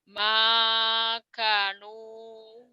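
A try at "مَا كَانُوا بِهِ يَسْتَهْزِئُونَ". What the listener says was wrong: Kanya panjang. Kanya panjang. Maka nu-nya panjang tiga-tiganya. Ma ma makanu makanu bihi yastahzi'un.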